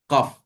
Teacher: Pangkal lidah menyentuh bahagian anak tekak. Keluar daripada situ huruf qaf.